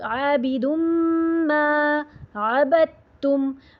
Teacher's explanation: دال اور تا کا بھی ادغام ہو رہا ہے، جس میں دال جو ہے وہ پوری طرح غائب ہو گیا